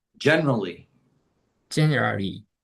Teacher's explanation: But you will hear most people pronounce only three syllables, not four.